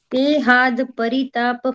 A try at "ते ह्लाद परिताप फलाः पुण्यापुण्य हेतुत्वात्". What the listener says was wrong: हाथ नहीं है, हाथ नहीं, हला, हा और ला, हला,